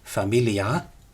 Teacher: that final d dropped off before Plautus · an ablative ending in a long a